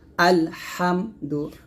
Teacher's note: এই হাটা হলকের মাঝখান থেকে চাপ দিয়ে বলতে হবে হামজা লাম জবর আল হাম মিম জবর হাম দাল পেশ দু